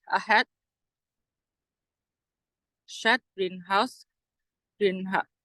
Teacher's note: And it is noticeable that when H occurs between voice sounds, and it is pronounced with voicing, not the normal voicing of vowels, but a weak, slightly fricative sound called breath voice. And H, the place of articulation of this consonant is glottal.